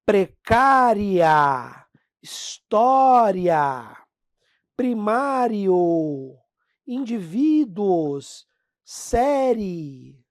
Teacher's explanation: quando vem a semivogal primeiro ou seja o fraco depois o forte você diz que o negócio cresceu cresceu em entonação em tonicidade na pronúncia aí você tem um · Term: ditongo crescente